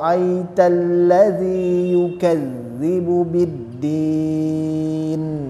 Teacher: jangan aritalladzi aritalladzi ahah seperti tidak ada tasdidnya hati-hati di situ lamnya bertasdid sehingga harus ditekan sedikit